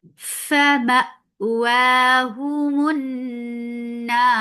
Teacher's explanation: Now, because of this work, we are giving temporary sukun on ra. This temporary sukun has turned this 2 counts long vowel into 4. This is mad arid sukun, and ra will be heavy because there is fatha before it, and ra will get sifab tawassut.